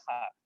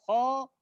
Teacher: Ketika tebal berarti dia agak terpengaruh dengan dhamma sedikit. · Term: alif far'iyah